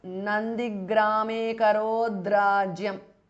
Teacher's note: The t changes to d because of sandhi. Rajyam. So it becomes Nandigrame karodrajyam because of sandhi.